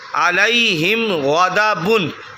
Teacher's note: آگے دیکھیں، عین زبر آ، لام یا زبر لائی، علی، ہا میم زیر ہم، علیہم، غین زبر غا، دال زبر غدا، غدا، با دو پیش بن، علیہم غدا بن۔ یہ علیہم، ہم کی جو میم ہے، میم ساکن ہے، اس کے بعد غین آ گیا، تو نہ ہی با آیا نہ ہی میم آئی، تو ان دونوں کے علاوہ لفظ ہے، تو یہاں غنہ نہیں کیا جائے گا۔